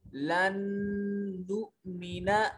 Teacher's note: اور اس کو ادغام کہتے ہیں۔ یہاں دو نون آ گئے، پہلا نون ساکن تھا دوسرا نون متحرک تھا، تو پہلے نون کو دوسرے نون میں ملا دیا